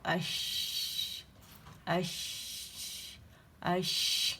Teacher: جو شین ہے نا وہ کیا ہوتا ہے، تالو سے تھوڑا سا گیپ رہتا ہے اس کے درمیان، کیونکہ یہ وائسلیس لیٹر ہے